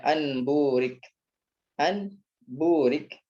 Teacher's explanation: Nun sukun diubah menjadi mim ya, sukun berubah menjadi mim. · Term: iqlab